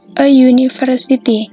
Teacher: Memang secara tertulis untuk huruf pertamanya adalah U, tapi secara kita membacanya adalah menjadi W.